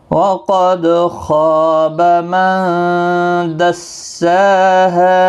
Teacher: وقد قاف مستعلیہ ہے، دال ساکن پر قلقلہ ہوگا، خا اور الف دونوں پور پڑے جائیں گے، خا مستعلیہ ہے، نون ساکن کے بعد دال آئے اخفاء حقیقی ہوگا، غنہ کے ساتھ پڑھیں گے. من دسا ہے، سین کے اوپر کھڑی حرکات ہے، ہا الف مدہ ہے، ایک ایک الف کی مقدار کے برابر کھینچ کر پڑھیں گے، خا کو بھی ایک الف کے برابر کھینچنا ہے.